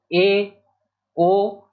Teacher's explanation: ऐसे स्वर जिनके उच्चारण में मुख द्वार आधा बंद रहता है उन्हें अर्ध संवृत स्वर जो है कहते हैं।